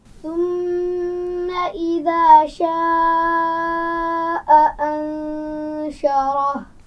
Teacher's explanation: یہاں انشرح نون پر آپ نے غنہ کیا، اسی طرح ثم میم پر بھی غنہ کیا